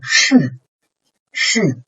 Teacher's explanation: the beginning point of the fourth tone is as high as the first tone